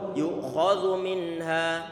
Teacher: Ini zal dia tipis, makhrajnya ujung lidah ditempelkan ke ujung gigi seri bagian atas dan dia dibaca tipis, tidak boleh dibaca yu'khadhu.